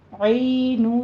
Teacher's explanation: اینو میں عین کی آواز آئے گی آپ کی، اینو نہیں کہنا، حمزہ نہیں آنا چاہیے